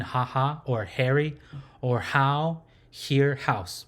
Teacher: It's not a glottal or guttural sound. It's just more like a breathy sound. So it doesn't really have a closed sound.